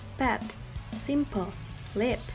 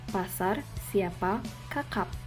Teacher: The English phoneme p is aspirated, while Indonesians isn't.